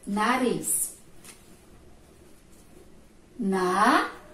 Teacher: Se minha língua tremeu, eu sei que ali entre as vogais vai apenas um R. O som foi fraco, a língua tremeu, é um R. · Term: som fraco